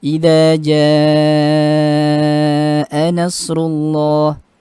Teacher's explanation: mad muttasil dan juga munafasil ini dibaca 6 harokat.